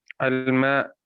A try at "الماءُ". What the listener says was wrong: ما أظهرت آخر الكلمة، أظهر آخر الكلمة، آخری کلمے کا اعراب ظاہر کیجئے، کیا ہے؟